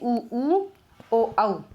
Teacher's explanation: वृत्तामुखी वो हो गए, वो स्वर बोले जाते हैं जिनसे मुंह एकदम वृत्त के हिसाब से गोल होता है